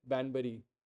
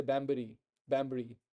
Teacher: whenever you have a n and followed by some labial sound it becomes M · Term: N becomes M